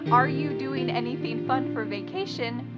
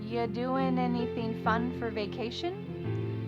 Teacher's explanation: What happened to the verb are? Are you doing? It's completely gone. Maybe it's also on vacation.